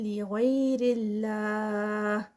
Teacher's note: لغیر اللہ 4 counts کا stretch stop پر. اور لفظ جلالہ لائٹ ادا ہوگا کیونکہ اس سے پہلے زیر آ رہی ہے.